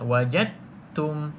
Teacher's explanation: Maka abaikan terus huruf dal di sini, terus masuk ke dalam huruf ta secara sempurna. Kita panggil dekat sini kategori dia idgham kamil.